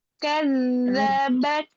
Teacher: Nah, di sini zalnya tasdid, kasih dia tempo.